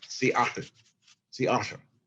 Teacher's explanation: at the very end, you have, and most English people can't even begin to pronounce this, a voiceless lateral alveolar fricative. You have Seattle.